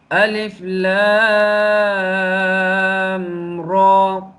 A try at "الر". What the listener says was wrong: आपने यहाँ पे अलिफ को भी थोड़ा सा खींचा है, ये गलत